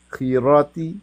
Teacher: खा को मुफखम पढ़ते हैं मुंह भर के